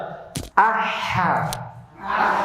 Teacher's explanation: Itu hames. Udaranya keluar, pita suara enggak bergetar. Itu sifat hames. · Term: hams